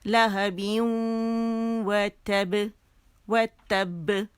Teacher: ٹھیک ہے، تو یہ کیا ہوا کہ جب نون ساکن کے بعد واو یا آئے گا تو وہاں پہ 2 کاؤنٹس کا ہم غنہ کریں گے، اور آواز جو ہے تھوڑی سی منہ سے زیادہ ناک سے نکلے گی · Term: ادغام ناقص بالغنہ